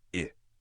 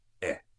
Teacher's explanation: No M, o som é fechado. E. No café, o som é aberto.